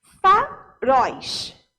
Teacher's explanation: a última sílaba sendo falada com mais força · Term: oxítona